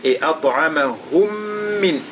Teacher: Donc Al-Ladhi At'amahum et At'a nous avons la lettre Ta, n'est-ce pas, qui, sur laquelle il y a As-Sukun. Elle est donc lue avec Al-Qalqala.